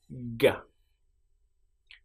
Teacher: for the sound G, we close our mouth at the back. So where the back of our tongue is and the roof of our mouth, we put them together like that. And then we say G.